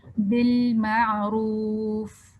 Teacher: زبان کو اوپر ٹچ کیا اور سائڈ سے آواز نکل گئی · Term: الانحراف